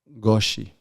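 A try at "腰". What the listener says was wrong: Koshi. because it's the first, it's with a K, koshi. But if it's o goshi, which is second, then it's a G.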